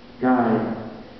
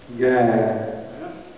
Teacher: Southerners don't say guide because they don't say the diphthong I. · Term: monophthongization